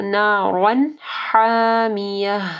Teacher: اظہار ہوگی، ٹھیک ہے، تنوین اس کے بعد ہا حروف حلقی میں سے ہے تو نارا حامیہ، حامیہ، یہ ہا کو واضح پڑھنا ہے اور یہ گولتا جو ہے یہ وقف صورت میں ہا ہو جائے گی۔